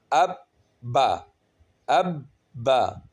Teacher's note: اس کو ہم ابا ایسے نہیں پڑھیں گے، اب رک گئے، با سختی کے ساتھ آگے چلنا ہے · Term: کلکلہ